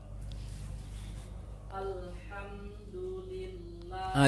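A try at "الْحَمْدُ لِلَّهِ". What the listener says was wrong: Lillah. Tasydid itu lillah.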